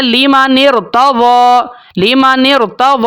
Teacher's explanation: جو را ہے نون کو ہم اس کے ساتھ ملاتے ہیں، وہ جو را سے پہلے حمزہ استعمال ہوئی تھی حمزۃ الوصل، ہم اس کو گرا دیتے ہیں، اس کو ہم نہیں پڑھتے